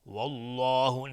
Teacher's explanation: لفظ جلاله مفخم هست اینجا چون قبلش فتحه اومده